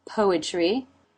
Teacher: the mouth for the tea poetry Co is in no diphthong there's the R consonant sound and then the corners of the lips pull back into the EE as in she sound